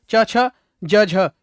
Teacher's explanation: स्पर्श संघर्षी, यानी स्पर्श तो करते हैं और साथ साथ कैसे रगड़ खाकर निकलते हैं